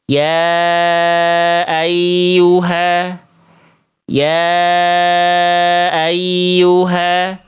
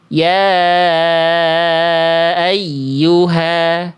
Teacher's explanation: tidak ada naber, tidak ada penekanan pada ya tasydid, sehingga ya tasydidnya tidak terasa ada tasydid